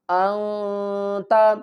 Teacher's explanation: اخفا کریں گے، نون کی آواز کو چھپا کر پڑھیں گے۔